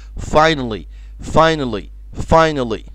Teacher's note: schwa sound يعني الصوت الضعيف اللي مش بننطقه